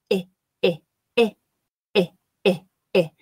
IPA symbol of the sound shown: ɪ